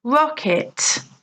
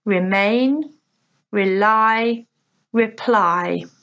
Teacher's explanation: the stress is on the first syllable, rocket, whereas the others, the stress is on the second